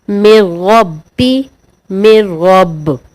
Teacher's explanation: ادغام بلا غنہ ہوگا، یعنی غنہ نہیں کریں گے